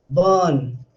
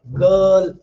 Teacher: So when I say burn, you can't hear r sound.